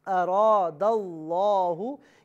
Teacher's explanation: तो लफ्ज़ अल्लाह की लाम को पुर यानी मोटा करके पढ़ा जाएगा · अलिफ मद्दा है लिहाजा इसे भी एक अलिफ यानी 2 हरकत की मिकदार खींच कर पढ़ा जाएगा। और यहाँ पर आप देख रहे हैं लाम पर तजदीद है, खड़ा ज़बर भी है, खड़ा ज़बर है लिहाजा इसे भी एक अलिफ की मिकदार खींच कर पढ़ा जाएगा।